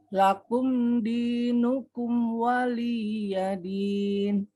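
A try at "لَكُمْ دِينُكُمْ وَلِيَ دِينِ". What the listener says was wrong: Lakum ini ada keluar ham sedikit Bu. Lakum nafas sedikit. Lakum. Setelah li langsung ke ya Bu. Waliyadin.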